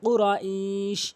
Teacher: থামলে কুরাইশ এক আলিফ টেনে থামতে হবে